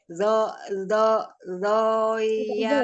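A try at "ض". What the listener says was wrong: Tidak zo. Tidak juga zo, zai, mo. Ya, tempelkan sisi lidahnya ke geraham atas. Sisi lidah kiri menempel di gigi geraham kiri atas.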